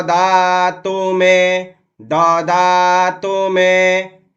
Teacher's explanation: तू पर भी समय इसलिए नहीं दिया जा रहा है क्योंकि ह्रस्व उकार है